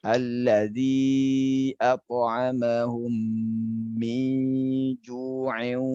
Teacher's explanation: Apakah kita ingin mewasolkan atau kita mewakofkan? Ya, kalau kita ingin menyambung atau mewasolkan, maka jangan dipanjangkan ju-nya.